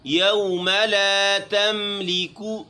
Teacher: میم ہلکا سا ناک میں جائے گا